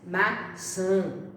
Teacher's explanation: Então, nasalização quer dizer a palavra quando pronunciada e que aparece o tio, dá a impressão que ela sai pelo nariz, maçã, né? Então, o som nasalizado dá a impressão que na hora da pronúncia aquela palavra sai pelo nariz.